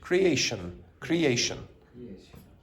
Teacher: with those io n suffixes at the end. The pronunciation is going to be weak. It's going to be shun.